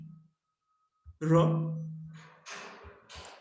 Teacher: Ra is a voiced alveolar approximant.